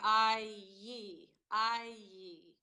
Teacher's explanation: So the sound I, which is the most common mispronunciation I hear from Aussies, the I sound is the combination of ah plus E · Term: diphthongs